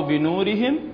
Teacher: هنا الميم عندنا بعدها الواو، تكون أشد إظهارا.